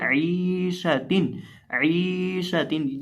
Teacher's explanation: क्योंकि यहाँ या साकिन से पहले ज़ेर है, वहाँ या साकिन से पहले ज़बर थी, तो यहाँ या साकिन से पहले ज़ेर है, इसलिए हम यहाँ आइन को खींच के पढ़ेंगे